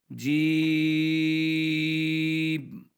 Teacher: اس جی کو لمبا کریں گے بغیر نون کے، جی، اینڈ پہ جا کے ہم میم کو ساکن کر کے پڑھ دیں گے، جی، جیم ہا۔